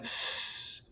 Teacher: the sound source is that point of turbulence between my tongue and the alveolar ridge. It's that point of constriction that is making that white noise. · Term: voiceless consonant